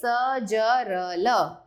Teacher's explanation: दांतों से कौन सी आवाज निकलती है, कौन से व्यंजन होते हैं वो, त, थ, द, ध, न। वत्सर्य, दांतों के मूल से।